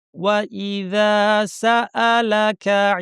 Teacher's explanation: জাল বলার জন্য জিহ্বার শীর্ষ উপর দাঁতের শীর্ষে লাগিয়ে বলবেন সুন্দর করে